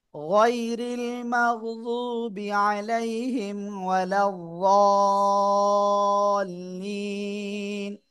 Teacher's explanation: এখানে এই জদ অক্ষরে আমরা চার আলিফ টেনে পড়বো